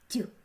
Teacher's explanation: Третій звук подовжений, м'який, глухий, приголосний звук ть.